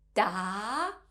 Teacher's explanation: has a rising tone so you might notice a slight tilt of your head upwards when you say this tone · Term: second tone